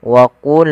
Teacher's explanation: Pada lafal wa qulna ya, qa salah satu huruf yang dia kita namakan dengan salah satu sifatnya adalah sifat huruf isti'ala, yang mana pangkal lidah kita harus kita angkat sehingga terdengar suara qa-nya menebal